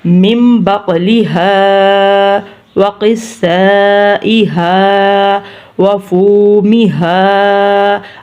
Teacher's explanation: اب فو پہلا حروف پیش والا، دوسرا واو ساکن ہے تو اس لیے ہم نے فو کو بھی لمبا کیا ہے